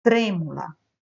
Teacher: Nós temos aí a sílaba tônica trem, né? E ela é uma proparoxítona.